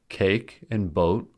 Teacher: cake and boat are 1-syllable words as their vowels are diphthongs, A and O, respectively.